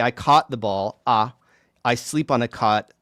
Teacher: Those are absolute homophones for me. I don't pronounce them differently. I don't even try unless I were like, faking an accent that had it. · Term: cot caught merger, caught merger